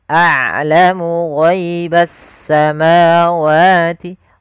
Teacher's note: Rokhawah yaitu sifat yang dimana dia harus dialirkan suaranya, sedangkan syiddah adalah suaranya tertahan. Nah, ain tidak terlalu ditahan dan tidak terlalu dialirkan, maka tengah-tengah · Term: bainiyah